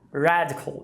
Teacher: Você tem dois As, só que o primeiro não é um schwa, é um ash. Radical. E o segundo sim que é um schwa, cool.